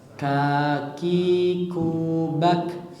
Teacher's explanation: K-nya orang Indonesia itu sudah pas, tinggal dihameskan, ada hembusan udara yang keluar